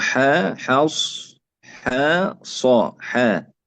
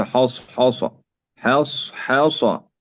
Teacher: الحاء هنا مرققة بعدها صاد مفخمة، نقول حا حص حا صا حا، ليس حص حاصة.